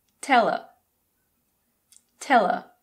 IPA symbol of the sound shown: ər